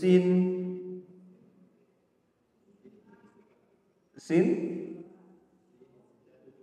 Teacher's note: ujung lidah dengan gigi seri bawah